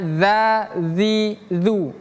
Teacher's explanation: Yang ini bacanya za, zi, zu. Ujung lidah bertemu gigi seri atas. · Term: zal